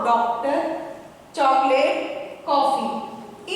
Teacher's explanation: जैसे इनका उच्चारण अ, ये हमारा अ है, दीर्घ स्वर, लेकिन आगत स्वर में उच्चारण में अ, थोड़ा सा आ को हम ओ में मिलाकर बोलते हैं, आ के साथ ओ को मिलाकर बोलते हैं। अ, इसका उच्चारण है अ।